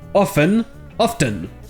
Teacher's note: Quel que soit le type d'anglais que vous parlez, ça peut se prononcer avec le T ou sans le T. Ce n'est pas une erreur.